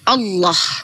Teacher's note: Maka kami membacanya dengan ditafkim ditebalkan huruf lamnya Allah.